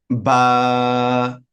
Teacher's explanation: দুই ঠোটের মধ্যস্থল থেকে উচ্চারিত হয়